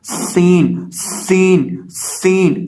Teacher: اس کی آواز آئے گی حاسادہ، سین سین سین، سین کے اندر سیٹی کی آواز پیدا ہوتی ہے، تو اسے ہم پڑھیں گے حاسادہ حاسادہ۔